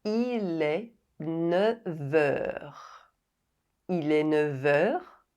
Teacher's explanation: “Neuf” doesn’t end with a silent consonant. But its [f] sound is pronounced [v]